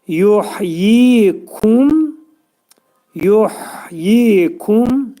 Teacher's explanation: hə hərfinin məxrəci boğazın ortasındadır.